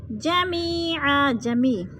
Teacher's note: یا ساکن سے پہلے میم کے نیچے زیر ہے تو یا مدہ کو ایک الف دو حرکات کے برابر کھینچ کر پڑھیں گے